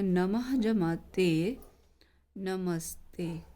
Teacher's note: तीसरे में बताया था कि यदि इस तरफ पूर्व में विसर्ग हो और दूसरी तरफ शब्द में तो थ या स आए तो विसर्ग के स्थान पर क्या आ जाएगा स और दंत्य स है ये